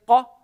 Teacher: The back of the tongue is touching the soft palate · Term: qaf